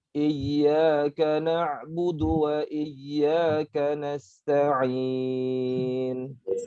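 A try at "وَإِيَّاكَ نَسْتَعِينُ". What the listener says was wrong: Ya, yang wa iyyaka nasta'in, iyyaka yang kedua kurang dialirkan. Iyyaka na'budu wa iyyaka nasta'in.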